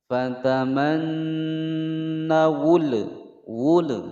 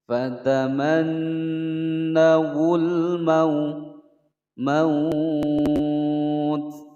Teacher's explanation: alnya dibaca jelas, tidak boleh dipantulkan dan tidak boleh didengungkan. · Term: al-qamariyah